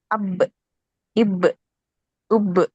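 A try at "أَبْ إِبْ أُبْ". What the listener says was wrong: ఇలా చదివేటప్పుడు బాని ఒత్తి పలకొద్దు, నార్మల్గా పలకండి.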